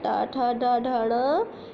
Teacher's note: टा वर्ग ट, ठ, ड, ढ, ण, इनका उच्चारण मूर्धा से होता है।